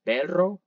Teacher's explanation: the alveolar Ridge and we know it's a trail means that we take our tongue and hit it against the alveolar Ridge multiple times so like a vibration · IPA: [r]